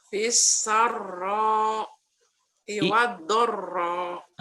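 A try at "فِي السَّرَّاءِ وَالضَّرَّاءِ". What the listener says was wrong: Itu nggak gabung sebetulnya dalam Qurannya. Kalau dipisah di Qur'an 5 ini nggak apa-apa. Fisarro wadorro. Coba pisah.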